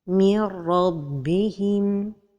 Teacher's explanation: Dans le cas de l'idgham de an-nun as-sakina avec la lettre ra, il s'agit d'un idgham complet, alors la lettre ra porte shadda. Seulement cet idgham aussi se fait sans ghunna.